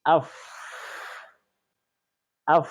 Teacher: For example, you say af, af. So the vocal cord is not being vibrated, and again, there is free passage of air which you will feel on your palm. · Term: alhams